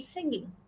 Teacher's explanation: in singing the tone went down